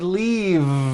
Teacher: I should have said leave with a voiced V sound.